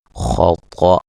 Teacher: طا کو موٹا، خا کو موٹا، حمزہ کو باریک پڑھیں گے، اور جب وقف کریں گے تو حمزہ یہ نون تنوین کو الف مدہ میں تبدیل کر دیں گے، ٹھیک ہے جی۔